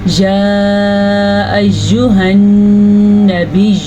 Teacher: نون کے اوپر شد آ گیا تو غنہ ہوگا